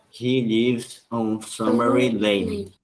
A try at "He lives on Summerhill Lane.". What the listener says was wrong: Puxa bastante no H, pode caprichar, ó, Summer Hill. Porque no H, no português, o H, muitas vezes, ele não vai ter esse som forte, de pronúncia. Aí a gente fala, muitas vezes ignora, né? Summer Hill. Só que, ó, Summer Hill, tá? Hill.